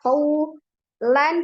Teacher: Alaika qawlan, qaw ada harfulin waw sukun sebelumnya fathah. Qawlan fathah tanwin bertemu dengan huruf sa dibaca ikhfa